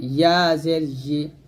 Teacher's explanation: জিহ্বার মধ্যখান তার উপর তালের সঙ্গে লাগবে